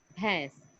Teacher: بھا کا ساؤنڈ آئے گا تو اور اس کے بعد یہ ہے تو کیا ہو گیا؟ اور نون کی آواز آ رہی ہے، ہلکی سی ناک سے نون غننے کی آواز نکلتی ہے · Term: نون غنہ